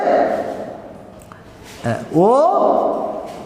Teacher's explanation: এই বর্ণ দুটি হচ্ছে কণ্ঠ ও ওষ্ঠ। এই দুটি বাকযন্ত্রের সম্মিলনে এই বর্ণ দুটি উচ্চারিত হয়। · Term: কণ্ঠস্থ স্বরবর্ণ